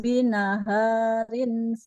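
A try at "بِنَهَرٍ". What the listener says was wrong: haknya nggak boleh panjang. Nggak binahar.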